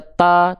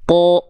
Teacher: Bang, emang kalau huruf tebal, nah gitu ya, emang kalau huruf tebal ketika dia berharokat baris atas, emang nggak dibaca dengan vokal A? Nah, kalau huruf tebal itu ketika dia berharokat baris atas atau fathah, huruf tebal akan terdengar condong seperti vokal O